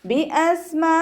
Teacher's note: സീന് കൽക്കലയുടെ ലെറ്ററിലാത്തത് കൊണ്ട് half സുക്കൂന് കൊടുക്കുക